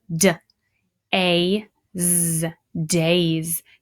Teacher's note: And I want to hear that Z sound at the end, even though it's not a Z.